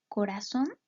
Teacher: la palabra corazón sabemos que suena más fuerte en son porque está tildada por lo tanto esa sílaba que suena más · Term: sílaba tónica